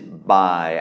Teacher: it's a low tone because it's a mid-class consonant with the tone mark mai ek